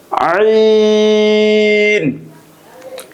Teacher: এই মাখরাজটি হলকের মধ্যখান হইতে অথবা কণ্ঠনালীর মাঝখান থেকে উচ্চারিত হয়, গলাটা হালকা ডাবিয়ে। আইন। এই মাখরাজটি উচ্চারণ করার সময় গলার ভিতরে হালকা চাপ দিয়ে উচ্চারণ করতে হয়।